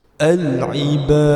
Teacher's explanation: Apabila kita berhenti atau wakafkan bacaan, kita perlu matikan huruf dal tersebut. Maka hukum bacaannya ialah qalqalah kubra, perlu didetakkan dengan kuat.